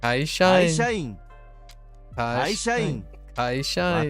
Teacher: I hear there's syllable break, but it's not like a glottal.